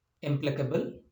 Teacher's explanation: the stress on this word is on PLAC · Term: primary accent